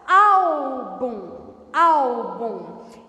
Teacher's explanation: ela começa bem forte e termina fraca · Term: paroxítona